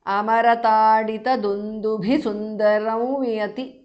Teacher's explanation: Because of sandhi, Anuswara changes to the nasal of va.